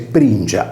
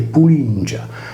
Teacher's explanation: Il campidanese pringia è la contrazione con sincope della vocale U della voce pulingia, causata dallo scivolamento regressivo della consonante liquida L, rotacizzatasi poi in R.